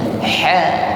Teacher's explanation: mengucapkan ha dengan makhraj wasatul halqi, yaitu tenggorokan bagian tengah.